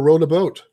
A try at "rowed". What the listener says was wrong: Well, it sounds like you're saying rowing, like rowing a boat.